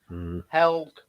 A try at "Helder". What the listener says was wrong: It's Yelde. Apparently, you don't pronounce the H, which I learned the other day.